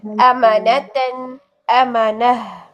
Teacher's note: अच्छा, एक नया कायदा यहाँ पर कि जब गोल ता के ऊपर दो ज़बर आ जाएं तो इस गोल ता को हम हा साकिन में चेंज कर देते हैं, हा की आवाज में पढ़ते हैं वक्फ करते हुए, ठीक है। वक्फ करते हुए इस गोल ता की जो साउंड होती है वो हा में चेंज हो जाती है